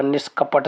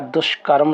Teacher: विसर्ग के स्थान पर मूर्धन्य सा आ जाएगा।